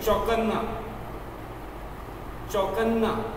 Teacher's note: तो न का एक पहले अल्प उच्चारण करें, बाद में बड़े जो पूरा है उसका पूरा उच्चारण करें।